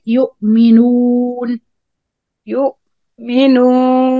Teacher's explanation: the wow need to be clear from any غنة. So you keep blocking your nose in the wow to make it clear.